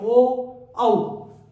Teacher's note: ओष्ठ्य कंठ्य स्वर, होठ और कंठ दोनों से बोला जाएगा। ओष्ठ्य कंठ्य स्वर में कौन कौन सा, होठ और कंठ दोनों से, ओ गले से आवाज आ रही है, देखो आप हाथ लगा के, ओ औ, तो ओष्ठ कंठीय, ओ और औ, ये हो जाएंगे 2।